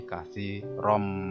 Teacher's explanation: Cara membacanya adalah memasukkan ke huruf berikutnya dengan mendengung. Katsiron menjadi katsirom. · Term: idgham bihunah